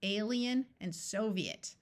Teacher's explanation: Although most of the time IE in the middle of a word has the long E sound, there are some words where it splits into two vowel sounds. In these two words, the I takes on a clear long E sound, alien and Soviet.